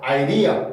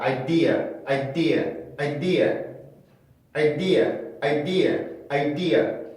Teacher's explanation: D 발음이 강세 음절의 시작이야. 그러면 이거는 플랩을 해줄 수 없고 원래 D 발음을 살려줘야 돼요.